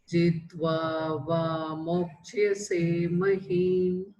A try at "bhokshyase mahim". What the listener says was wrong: So that is bhokshyase mahim. So not mo, bho, pa, pa, ba, bha, bhokshyase.